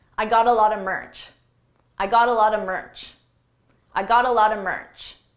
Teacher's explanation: Here I used a reduction. A lot of is pronounced a lotta, a lotta.